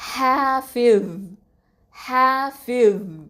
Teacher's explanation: உங்களுடைய சப்தத்துடைய ப்ரெஷர் வந்து மேல் முரசை நோக்கி இருக்கணும் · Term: ஹெவி லெட்டர்